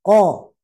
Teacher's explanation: Pangkal lidah ko, ka. Jangan sampai ko ikut hembus, tidak boleh.